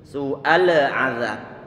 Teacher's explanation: Su'al azab ini lam dia disukunkan, maka jangan sampai diberikan qalqalah.